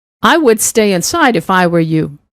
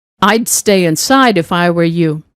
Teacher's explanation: The main sentence has the d reduction, the if clause, no d reduction.